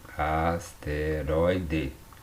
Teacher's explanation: A sílaba tônica está aqui. E o ditongo aberto oi está bem na sílaba tônica.